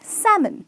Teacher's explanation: L is silent, which means the pronunciation is salmon